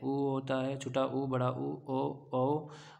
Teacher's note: जाएंगे जिसमें क्या होता है वृत मुखी होते हैं आपके ओठ उच्चारण करते हैं तो जो है आप आपके ओंठ गोलाकार हो जाते हैं